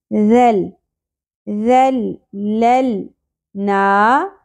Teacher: وَذَلَّلْنَاهَا، واو کی زبر کو زیادہ نہیں کھینچنا، ذال نرمی سے ادا ہوگا، سیٹی اور بزنگ ساؤنڈ نہیں آنی، شدت سے نہیں پڑھنا، یہ والی ساؤنڈ نہیں ہو، ٹھیک ہے.